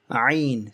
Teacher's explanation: you're constricting, you're squeezing your throat and making a high sound. Ayn. If you did not squeeze your throat, it would be like ayn, naturally flowing.